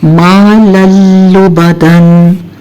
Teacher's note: ठीक, अब क्या हुआ कि हमने मा लन वर्ड था, लेकिन चूंकि आगे हमने देखा कि हरूफ इदगाम में से लाम आ गया, यानी तनवीन के बाद लाम आ गया जो कि हरूफ इदगाम में से है, तो हमने क्या किया, लन का हमने एक ज़बर के साथ पढ़ा और उसको आगे लाम के साथ जोड़ दिया